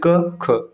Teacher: देखिए अघोष क्या होता है, इनके उच्चारण में स्वर यंत्र में कंपन नहीं होता है। किसी भी वर्ग का पहला और दूसरा अक्षर जैसे क ख, ठीक, आप बोल के देखें ना क ख, स्वर यंत्र में कोई भी कंपन नहीं होगा। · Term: अघोष व्यंजन